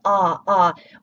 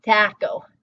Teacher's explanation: In Spanish, when we come across the letter a, we know it's gonna get the [ɑ] sound like a father, salsa.